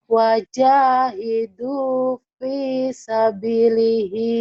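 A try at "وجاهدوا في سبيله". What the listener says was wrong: sabilihi panjang, Bu. Ayo lagi.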